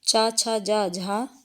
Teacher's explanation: हिंदी की तालव्य ध्वनियां हैं